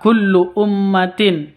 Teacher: mim tasydid berdiri sendiri gunah musyaddadah panjangnya dua ketuk atau dengungnya dua ketuk